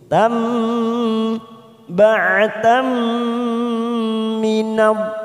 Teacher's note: Ada tak marbutah di sini fathah tanwin bertemu mim, namanya idgham bi gunnah. Kita tekan 3 ketuk siap masuk pada huruf mim.